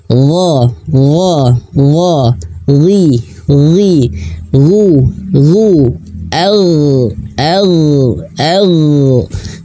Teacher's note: huruf Ghain juga memiliki kualitas ketebalan (istila') dan huruf Ghain memiliki kualitas rakhawah, yaitu aliran suara.